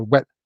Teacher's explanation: the distinction between the voiced and the voiceless W is being lost